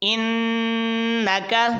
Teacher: اس کو ناک میں آواز لے جا کر پڑھیں گے، نون مشدد ہے تو غنہ کریں گے